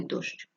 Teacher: буква щ на письмі позначає два звуки ш ч